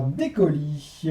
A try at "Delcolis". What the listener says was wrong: Ok, c'est se prononce Delcolis, il y a un L. Delcolis. Oui, mais il y a un L.